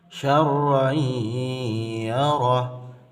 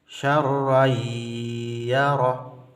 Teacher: hukum bacaannya adalah idgham bi gunnah, lebur dengan dengung